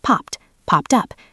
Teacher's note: The ed sounds like a T because pop ends in a voiceless sound.